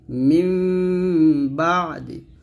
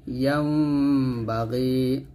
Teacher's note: ঠোঁটটা মিল করবেন, তবে বেশি মিল করবেন না, মাঝখানে একটু ফাঁকা রাখবেন, একটু ফাঁকা রেখে গুণটা আদায় করবেন।